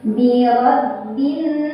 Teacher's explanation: Birabbin, ada gunnah musyaddadah karena ada nun yang bertasydid. Cara bacanya didengungkan, ditahan kurang lebih 2 harokat. · Cara bacanya alif lam tidak dibaca, dilewat. Jadi dari bi kita langsung tekan ke nun. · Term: alif lam syamsiyah